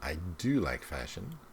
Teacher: Notice the stress on do.